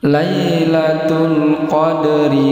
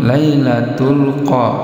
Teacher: ini huruf qaf tebal, dal qalqalah ini dipantulkan. Qadri ini ra berbaris bawah, ini tarkik dibaca tipis.